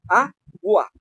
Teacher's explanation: No hay nada que rompa a U sobre A. Suena todo rapidísimo.